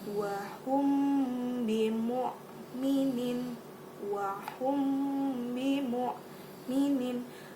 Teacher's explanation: mim mati bertemu dengan huruf ba, dibaca dengan samar-samar lalu didengungkan